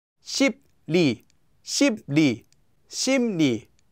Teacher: the 비읍 will become pronounced as a 미음, and the 리을 will become pronounced as 니은.